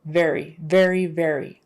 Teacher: made with the teeth just kind of touching that bottom lip it's the louder or voiced version of f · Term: v sound